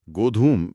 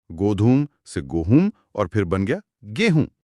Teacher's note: गोधूम में जो ध था वो बोलते बोलते ह बन गया। और जो म की ध्वनि थी वो नाक से होते हुए चंद्रबिंदु में बदल गई।